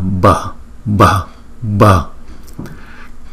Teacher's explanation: B đứng một mình thì chúng ta đọc là B. Chữ B và chữ H ghép lại chúng ta đọc là B, B, B. Đưa cái hơi nhiều từ trong miệng chúng ta đưa ra.